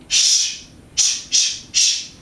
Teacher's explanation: Fortis voiceless alveopalatal fricative.